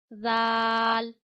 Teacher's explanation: जबान का सिरा ऊपर के दांतों के किनारों पे लगाइए और बड़ी ही नरमी के साथ दाल अदा करिए